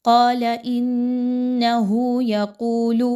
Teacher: لام کے اوپر چونکہ زبر ہے تو اس لام کو زیادہ کھینچ کے نہیں پڑھنا، مقدار کو بہت کم رکھنا ہے۔